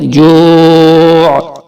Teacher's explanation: جو کو تھوڑا سا کھینچ کر, اور آخر میں عین کی آواز نکالیں گے